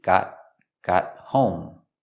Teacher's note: We see the T in got is a stop T.